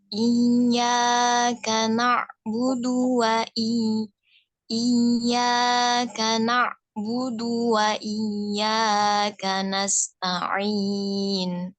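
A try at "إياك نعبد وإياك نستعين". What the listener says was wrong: Huruf ainnya nggak boleh terhenti ya. Dia harus menyambung ke huruf berikutnya. Iyyaka na'budu. Iyyaka na'budu wa iyyaka nasta'in.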